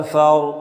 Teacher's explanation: فا کو را کے ساتھ ملا کے پڑھیں، را کو موٹا کر کے پڑھیں